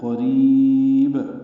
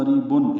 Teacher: قریب قوف پر پڑھیں گے، را باریک پڑھیں گے، را کو لمبا کریں گے، با ساکن پہ قلقلہ ہوگا، وقفاً مد عارض للسکون ہے۔ قریب ملانا ہو تو قریبن اظہار ہوگا